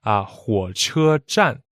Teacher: 火 is a third tone. 车 is first tone. And 站 is fourth tone.